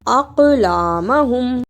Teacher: الف کو قاف سے ملانا ہے اور قاف کو موٹا پڑھنا ہے